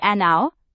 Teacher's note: because the H in hour is silent, so the word starts with an ow sound